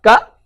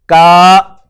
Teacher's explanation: For example, we have got the stretched Fatha and stretched Kasra. This is Ka Fatha, Ka, but if you have stretched Fatha, now it is Ka